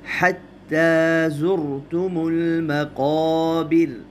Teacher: مقابر میں الف کو بھی موٹا پڑھیں گے، پر پڑھیں گے، اس لیے کہ الف سے پہلے حروف مستعلیہ میں سے قاف آیا ہے۔ 5 حروف میں نے بتائے تھے آپ کو، صاد، ضاد، طا، ظا اور قاف۔